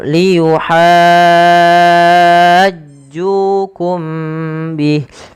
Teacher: mim mati bertemu ba sama dengan atuhadditsunahum, ditahan suara mimnya karena dia ikhfa syafawi